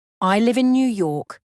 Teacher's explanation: it will sound like a statement two falling intonation down arrow your voice drops at the end of the sentence we use this for statement and commands